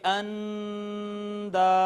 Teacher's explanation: نون ساکن کے بعد حروف اظہار میں سے کوئی حرف نہیں ہے، حروف حلقی میں سے، لہٰذا یہاں پر اخفا ہوگا اور آواز چھپائی جائے گی